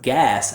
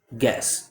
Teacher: the mistake that I hear is not getting enough open quality for that ah like bat vowel. So instead of gas, I hear guess.